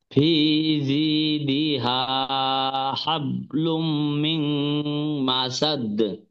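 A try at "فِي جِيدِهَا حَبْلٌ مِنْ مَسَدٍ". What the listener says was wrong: হাবলুম, এখানে একটু গুন্না হবে।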